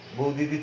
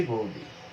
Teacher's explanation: ব্যঞ্জনচ্যুতিতে যেটা হয় সেটি হচ্ছে সমবর্ণ থাকে, এই বৌদিদি সমবর্ণ থেকে একটি লুপ্ত হয়ে যায়, বৌদিদি থেকে আমরা বলেছি বৌদি, এটা হচ্ছে ব্যঞ্জন চ্যুতি।